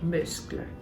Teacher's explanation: muscle has a silent C in English, but you would pronounce that in French